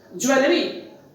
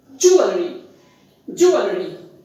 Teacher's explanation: The stress is on the first syllable, and there is the sound ua, that is diphthong.